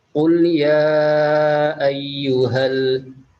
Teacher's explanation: Setelah itu di sini ada mad jaiz munfasil, yaitu mad bertemu huruf hamzah yang bentuknya alif di lain kalimat, panjangnya 2 alif atau 4 harokat